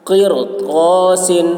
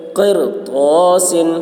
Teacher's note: رائے ساکنہ کے بعد اسی کلمہ میں حروف مستعلیہ میں سے طا آ رہا ہے اس لیے را کو پر پڑھیں گے